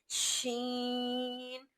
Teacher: आवाज भर कर पूरे मुंह से निकल रही है।